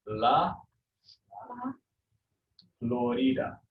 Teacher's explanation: the accent is on the second last syllable